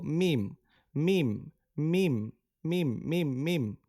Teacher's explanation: দুই ঠোঁটের শুকনা জায়গা হতে উচ্চারিত হয়